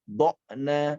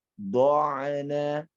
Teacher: dirasakan dia melalui tengah tenggorokan dan tidak mentok kepada huruf hamzah. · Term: ain